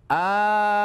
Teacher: yang bertemu adalah sukun maka ee dibaca dengan ringan disebut mukhaffaf disebut isyba karena dibaca enam harakat